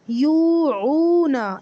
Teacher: یا واو پیش یو، عین واو پیش عو، نون زبر نا، یوعونا، یہ واو مدہ ہیں دونوں، اس کو لمبا کریں گے